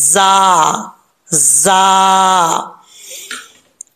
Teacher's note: अब जीम के बाद जा है, ये जो जा है रा की शक्ल में आता है और उसके ऊपर नुक्ता होता है, ये जा सीटी के साथ पढ़ा जाएगा, हुरूफ सफीरिया में से है। ठीक है, तो इसको सीटी के साथ पढ़ना है, जा जा।